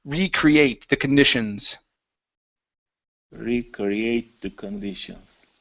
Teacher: our stress is going to be at the very end